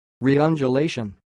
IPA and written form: riːʌndjuːˈleɪʃ(ə)n (reundulation)